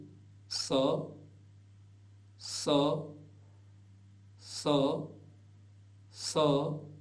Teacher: यह दांतों के बीच में जीभ लगा कर के बोला जाता है जीभ दांतों को स्पर्श भी कर जाए तो भी गलत नहीं